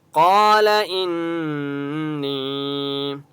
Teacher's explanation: الف مدہ ہے، قاف کو 1 الف کی مقدار کھینچ کر پڑھیں گے اور قاف مستعلیہ میں سے اس لیے قاف کو موٹا پڑھیں گے۔ · قال ان نون کے اوپر تشدید ہے، یہاں پر بھی غنہ ہوگا۔ یا مدہ ہے، نون کو 1 الف کی مقدار کھینچ کر پڑھیں گے۔